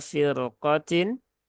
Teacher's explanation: Nah, ini walaupun didahului harokat kasroh ya, rok sukunnya dia tetap dibaca tebal karena dia setelah rok ya bertemu dengan huruf isti'la yang berharokat fathah